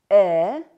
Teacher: э нижняя челюсть продвигается вперёд язык отодвигается назад а МДС э мягкий гласный передний язычный сверх краткий кончик языка касается нижних зубов произносится кратко и нечётко э